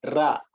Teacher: Ra is produced by tongue pointing and touching the palate